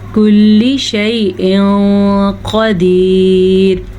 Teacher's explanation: تنوین کے بعد قاف حروف اخفا میں سے ہے تو ہم نے تنوین کو چھپے ہوئے غنے کے ساتھ پڑھا